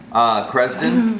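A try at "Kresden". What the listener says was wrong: The K is silent.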